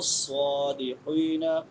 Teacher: स्वाद सीटी वाले हरूफ में से भी है और मोटे हरूफ में से भी है।